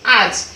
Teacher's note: শব্দের শেষে যে স্বরধ্বনি লুপ্ত হয় সেটাই হচ্ছে অন্তঃস্বর লোপ